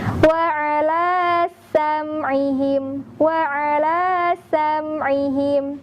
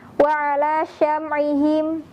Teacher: Sinnya lebih terdengar, ada bunyi desisannya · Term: huruf sin